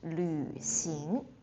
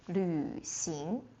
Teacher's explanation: the yu sound is a bit difficult for some people, so 旅行, and it's third tone, so two difficult things put together.